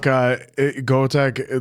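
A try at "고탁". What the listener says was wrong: There's no E in it. There's no E. You gotta say go tak. There's no E.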